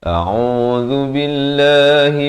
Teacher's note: A'udzu billahi di hujung lidah. Lafaz jalalah dibaca nipis, dua harakat.